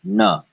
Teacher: enough no okay now technically this was always pronounced as na this was a retroflex n sound